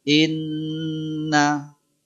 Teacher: kadar panjangnya itu bisa disebut dua harakat atau tiga ketukan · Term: Nun tasydid